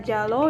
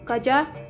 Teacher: Konsonan hambat palatal bersuara J dilafalkan sama dengan konsonan C, tetapi pita suara bergetar